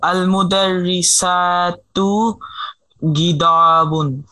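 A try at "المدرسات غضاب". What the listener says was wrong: হ্যাঁ বহুবচনটার জন্য আমি লম্বা করে বলতে বলেছি।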